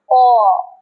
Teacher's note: তার মানে যখন আমরা অ বলবো, জাস্ট বলে দিলাম অ, না, অ কোথা থেকে আসছে শব্দটা, বাতাসটা কোথা থেকে আসছে আমরা একটু খেয়াল করি। অ কণ্ঠ থেকে, অর্থাৎ একদম গলার ভেতরের সরু অংশ থেকে বেরিয়ে আসছে।